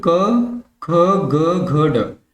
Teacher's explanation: जो कंठ की सहायता से बोले जाते हैं व्यंजन उसको बोलते हैं कंठ व्यंजन